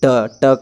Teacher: जीभ ऊपर से सटकर नीचे की ओर जोर से टकराता है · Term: मूर्धन्य व्यंजन